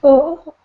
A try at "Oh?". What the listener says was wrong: Oh? Question. Oh? got to go up. Oh?